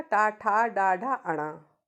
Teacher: मूर्धा होता है दांतों के पीछे वाला हिस्सा, तालु के आगे और दांतों से पीछे वाला हिस्सा